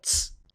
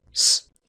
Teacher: las africadas dentoalveolares tenían alófonos tanto africados, es decir, tal cual, ts, como fricativos, es decir, s